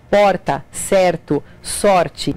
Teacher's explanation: esse som de r é feito com a ponta da língua vibrando